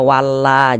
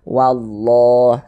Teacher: huruf lam yang di tengahnya nih huruf lam jalalahnya itu ditebalkan dibaca tkhim jangan dibaca walla jangan tapi ditebalkan wallah seperti itu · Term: dibaca tafkhim